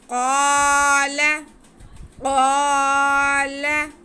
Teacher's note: क़ाफ को हम एक अलिफ के बराबर खींचेंगे, लाम को बिल्कुल नहीं खींचेंगे। क़ाफ को उल्टा करके पढ़ेंगे क्योंकि ये रूफ़े मुस्तालिया में से है।